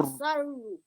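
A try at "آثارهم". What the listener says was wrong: Okay, so you see the wow here, right? So you have to give it 2 counts. Asarru. So it has to be for 2 seconds, right? Or for 2. Count your fingers 2 times, right? Asarru. Asarru.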